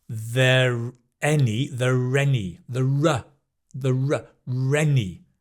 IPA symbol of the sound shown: ə